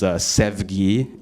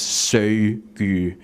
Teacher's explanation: love is sevgi in Turkish, and it's söygü in Uyghur. Like the ev is preserved as a ö.